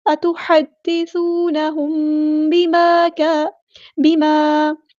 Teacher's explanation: میم ساکن کے بعد با ہے تو یہاں پہ اخفاء شفوی ہوگا · الف مد آ گیا تو مد اصلی کریں گے. یہ جو الف ہے باریک پڑ جائے گا